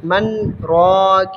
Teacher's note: من راکن میں من کی نون کو ساکن پڑھ کر سقطہ کریں، آگے راکن میں نہ ملائیں